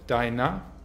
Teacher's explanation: deiner mit a-schwa am Ende